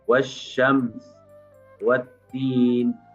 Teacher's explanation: huruf alif lamnya langsung hilang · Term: lam syamsiah